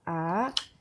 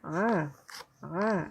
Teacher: Hamzah dari pangkal tenggorokan atau tenggorokan bagian bawah, sedangkan ain itu dari tenggorokan bagian tengah.